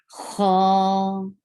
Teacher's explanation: It will be heavy, and it will be 2 counts long.